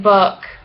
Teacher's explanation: Fancy U, high, back, rounded, lax, like in book.